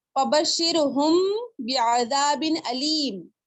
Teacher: دونوں کلموں کو ملا کر پڑھنا ہے. پھر میم ساکن کو پھر غننے کے ساتھ 2 حرکت تک پڑھنا ہے آپ کو. ٹھیک ہے, اچھی طرح غنہ کرنا ہے آپ کو اور 2 حرکت تک غنہ کرنا ہے. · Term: اخفاء شفوی